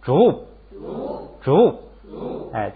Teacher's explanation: 就是最后落的那口型是波，那个不发出音来，做一个波的口型就完了